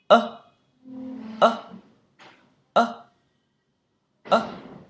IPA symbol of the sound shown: ɘ